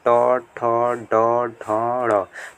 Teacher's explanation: ट, ठ, ड, ढ, ड़। तो इसके अंतर्गत क्या आ जाएगा, मूर्धा। इसके बाद आ जाता है तालु के आगे क्या होता है, तालु के आगे दांत के ठीक ऊपर।